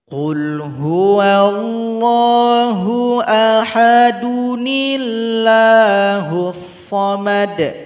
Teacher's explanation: Hamzah wasal yang fathah ini maka dihilangkan saja diganti dengan Nun kecil yang harakat kasrah